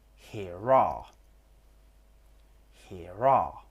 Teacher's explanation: in British English, we don't always pronounce the R on the end of some words. For example, here are here are with linking with R.